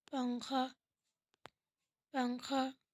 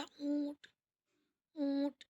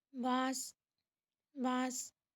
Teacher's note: نون کی ادائیگی ہوگی ناک میں چھپا کر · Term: گنگنی